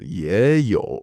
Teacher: So 也有马, all third tones, right? But when you have two third tones together, again, just to make the language flow better, the first one changes into a second tone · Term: Tone change rules